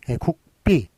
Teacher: G나 B로 소리 내지 않고 우리는 이렇게 P로 소리 내요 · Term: 무성음